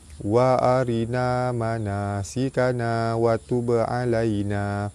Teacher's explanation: Ba mati di tengah kalimah, qalqalah sugra, lantunannya tidak kuat. · Baris atas bertemu dengan ya di tengah kalimah. Hukum dia mad lin, dibaca lembut serta panjang 2 harakat.